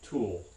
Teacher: the dark L or dark L sound, tends to occur in word final position or maybe in syllable final position in American English, as in the last sound in tool.